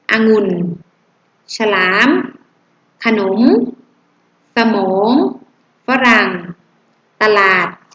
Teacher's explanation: ต้องอ่านออกเสียงพยัญชนะตัวแรกเป็นเสียงอะทุกคำเลย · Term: อักษรนำ